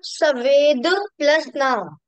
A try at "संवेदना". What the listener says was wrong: संवेदना, सं, नहीं नहीं नहीं नहीं नहीं ऐसा नहीं आएगा, सम, सा पे अंकी बिंदी, सम खाली, सम प्लस वेद, प्लस वेदना, वेदना,